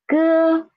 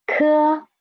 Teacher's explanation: ge, ke, ge, soft air. Ke, stronger air. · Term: unaspirated and aspirated initials